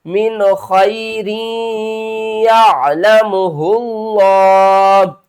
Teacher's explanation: ولا جدال فی الحج وما تفعلوا من خیر، یہ دیکھیں را کے نیچے دو زیر ہیں، آگے یا کے اوپر تشدید ہے تو ہم کیا کریں گے، یہاں پر ادغام کریں گے، یعنی را کو یا کے ساتھ ملا کر پڑھیں گے